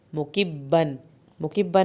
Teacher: مکبن میں تنوین ظاہر ہوگی کیونکہ اگلا لفظ جو ہے وہ عین سے شروع ہو رہا ہے